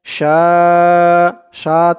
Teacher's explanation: চার আলিফ টান মধ্যে মুত্তাসিল